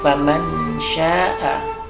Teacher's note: ini adalah ikhfa hakiki, ada nun mati bertemu dengan shin